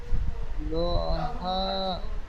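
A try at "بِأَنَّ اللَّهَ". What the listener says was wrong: হা টান হবে না, বিআন্নাল্লাহা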